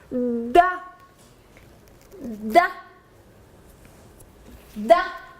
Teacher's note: La consonne D, par exemple, se prononce en donnant du bout de la langue au-dessus des dents d'en haut.